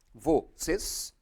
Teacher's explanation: ela também é uma palavra oxítona, que a sílaba tônica é a última